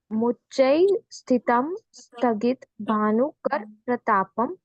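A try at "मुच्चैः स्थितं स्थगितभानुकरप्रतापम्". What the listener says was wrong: Okay, स्थगित भानुकर प्रतापम ऐसे नहीं बोलना है बेटा। मुच्चै स्थितम स्थगित भानुकर प्रतापम, वो आधे आधे अक्षर नहीं है, हमें ट्रेन भगानी नहीं है, ठीक है? धीरे धीरे शांति से बोलो। मुच्चै स्थितम स्थगित भानुकर प्रतापम मुक्ता फल प्रकर जाल विवृत शोभम प्रख्यापयत त्रिजगत, तह नहीं बोलना है, प्रख्यापयत त्रिजगत परमेश्वरत्वम।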